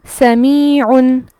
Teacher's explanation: ہم دو پیش پڑھ رہے ہیں لیکن ساؤنڈ کس آواز پہ اختتام ہوتا ہے لفظ کا؟ وہ نون ہے، نون پر خاتمہ ہو رہا ہے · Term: تنوین